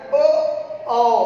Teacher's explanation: कंठ और ओष्ठ की सहायता से मिलाकर ओ, औ, ये हमारे कंठोष्ठ वर्ण हो गए